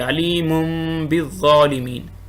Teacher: تنوین کے بعد با آ گیا تو میم پڑھیں گے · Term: اقلاب